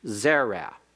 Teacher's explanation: it is accented on the first of its two syllables